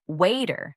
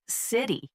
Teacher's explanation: Lastly, T-flapping is common in American English, where the T sound in the middle of words like water or city sounds softer, almost like a D